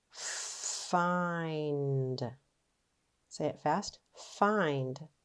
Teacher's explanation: a special pattern having a long vowel before the final Blend